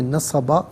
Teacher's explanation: دو زبر کی تنوین وقف میں الف سے چینج ہو جاتی ہے